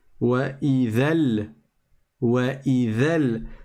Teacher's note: Bah, tu te retrouves avec une fin de mot ayant un soukoun, c'est le mat de la prolongation, et un début de mot qui est le lem avec un soukoun. Comme le premier soukoun est sur une prolongation, tu ne prononces pas du tout la lettre prolongée. Tu passes donc du dhal directement au lem.